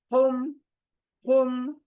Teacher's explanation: सीने से निकलने वाला हा, सीने से।